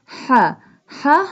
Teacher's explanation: ہا pronounced from the middle part of the throat